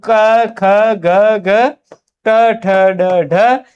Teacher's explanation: उठी वायु मुख अवयवों के स्पर्श मात्र करती है, यानी उनको केवल टच करती है और सीधे सीधे बाहर निकल जाती है। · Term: स्पर्शी व्यंजन